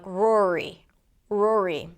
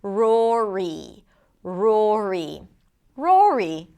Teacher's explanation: bring the tongue up for the R, bring it down for the vowel ro. It has to be down and then bring it up again for the R.